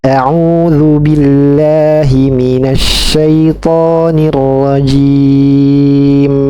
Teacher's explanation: Dia waqaf kita sukunkan. Maka ketika sukun akan terasa aliran suara bainiyahnya pada sifat huruf mim ya